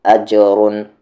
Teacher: را کو ہیوی کرنا ہے